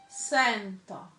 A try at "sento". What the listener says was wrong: You say sa. It's se. See, in Italian, there's, and even in English, there's two types of E's. There's an E, which is a very restricted E, and then there's an A, open E. So there's E, A.